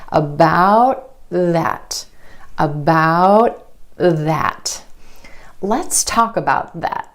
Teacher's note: The tongue tip stays up for the t and goes straight into the th sound. The tongue tip goes under the front teeth for the th sound. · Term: held T